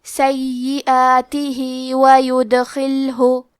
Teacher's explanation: آخری میں ہاں کے نیچے کھڑی زیر ہے، یہاں حکم ہے مد صلہ صغرا، مطلب ہم اپنی آواز 2 مد کے برابر لمبی کریں گے